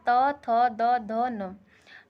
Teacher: त वर्ग का उच्चारण स्थान दांत होता है, इसलिए इन्हें दंतय व्यंजन भी कहते हैं।